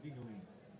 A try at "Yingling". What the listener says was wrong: Yingling, not Dingling. Don't say Dingling. Yingling. With a Y.